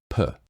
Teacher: produce the sound P which is spelled with the letter P your lips come together and close shut so the points of contact here are your two lips